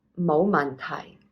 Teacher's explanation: So you'd be saying low rising, 冇, low tone, 問, down for 題.